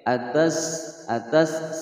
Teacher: sin berharokat sukun dibaca mengeluarkan desisan